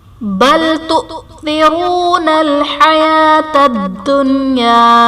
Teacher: تؤثرون میں حمزہ ساکنہ ہے، اسے ہمیشہ جھٹکا دے کر پڑھیں گے۔ تؤثرون میں واو ساکن سے پہلے حرف پر پیش ہے، واو مدہ کا قاعدہ ہے، اس لیے اسے ایک الف یعنی 2 حرکات کے برابر کھینچ کر پڑھیں گے۔